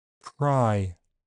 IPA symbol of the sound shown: ɹ̥